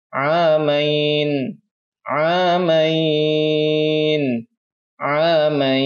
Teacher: ada ya sukun sebelumnya berharokah fathah dan setelahnya ada sukun yang palsu. Jadi kita bisa membaca 2, 4 atau 6 harokah